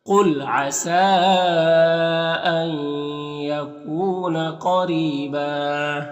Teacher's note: रॉ के नीचे ज़ेर, रॉ को बारीक पढ़ेंगे · नून साकिन के बाद या है हुरूफ़ यमीन में से, तो इदग़ाम नाक़िस होगा। कू में वाव मद्दा है।